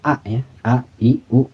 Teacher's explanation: Jadi hamzah itu adanya di pangkal tenggorokan. Pangkal tenggorokan ini di tenggorokan paling bawah.